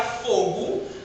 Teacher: A gente pronuncia fogo, mas na escrita eu não vou escrever um U no final